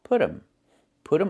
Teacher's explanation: And you hear um instead of them. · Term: reduction